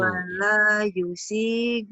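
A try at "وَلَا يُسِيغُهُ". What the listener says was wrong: Yu-nya panjang. Wala yusiku. Wala yusiku.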